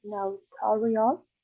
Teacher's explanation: I think the stress is in the second syllable